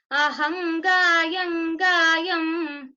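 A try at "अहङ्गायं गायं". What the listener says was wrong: See, first time you said properly, then Gankara didn't come. Both are Gankara there. Ahangayam gayam. Again, I'm correcting the panelist, but if we say the other way, it is not wrong. Even if we say aham and say the makara, gayam, it is not wrong.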